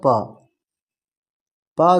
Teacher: प दोस्तों अघोष वर्ण है